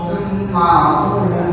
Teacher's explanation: Thum gunnah, mim yang bertasydid itu gunnah